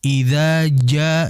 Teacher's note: Bahwasanya huruf jim merupakan huruf yang bersifat syiddah.